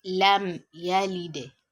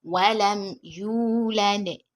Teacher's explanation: you have to pronounce Meem Sakina here clearly without any form of gunna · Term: idhar Meem Sakina